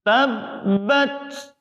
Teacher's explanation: Sifat huruf ta yang paling menonjol adalah berdesis. Oleh sebab itu, tabbat ada desisnya.